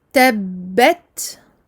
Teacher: je fais ma shadda, puis je fais le petit souffle qui accompagne le ta sakin